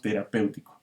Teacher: abiertas vamos con otro ejemplo terapéutico aquí está el diptongo terapéutico esta es una palabra esdrújula este porque la sílaba tónica está en la antepenúltima sílaba